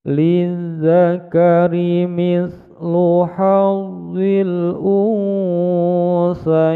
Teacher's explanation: Bacaan mad layyin bertemu dengan huruf nun yang disukunkan di akhir bacaan menjadi mad arid disukun, panjangnya 6 ketukan